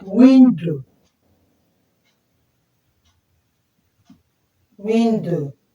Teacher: window we stress the first syllable